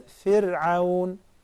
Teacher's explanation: But with kasra, then it is muraqqaqa, sakina and preceded by kasra, then also muraqqaqa, very thin